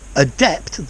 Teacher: the stress is on the second part of the word